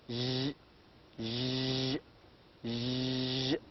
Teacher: So this is a voiced palatal, j, as in treasure and pleasure.